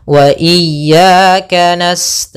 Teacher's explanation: panjangnya dua harakat maka panjang ya yang pertama dan yang kedua harus sama jangan beda jangan iyaka na'budu wa iyaka nastain jadi lebih memanjang